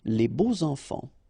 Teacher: even if you've got this X, well, phonetically it will be like Z, so like if it would be an S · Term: liaison